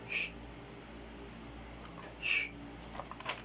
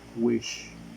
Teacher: According to voicing, it is voiceless. According to the place of articulation, it is palatal. According to manner of articulation, it is fricative.